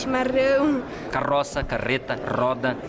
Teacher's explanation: o pessoal de são paulo capital curitiba e boa parte dos gaúchos faz o r com a ponta da língua